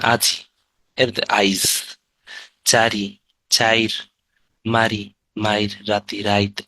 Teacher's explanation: অপিনিহিতি, অপিনিহিতি বেশি, সব থেকে বেশি আসে অপিনিহিতি মনে হয়, হ্যাঁ। পরের ইকার বা উকার আগে চলে আসে